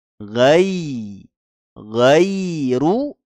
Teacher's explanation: ada huruf Ya Sukun sebelumnya fathah kita lembutkan bacaannya bacaan layin